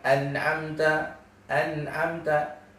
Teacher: ada gunnah dulu yang keluar dari hidung kita, walaupun presentasinya sangat sedikit.